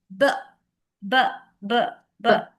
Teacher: when you say B, lips are closed and you burst air.